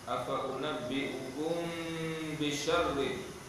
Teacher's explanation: mimmati bertemu dengan ba ikhfa syafawi dengan dua harakat